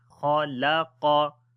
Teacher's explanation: Kha and qaf we read in heavy sound but lam we read in light sound. So be careful on this place as we say khalaqa.